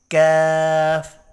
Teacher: قاف کے مخرج کے متصل ہی منہ کی جانب ذرا نیچے ہٹ کر کاف ادا ہوتا ہے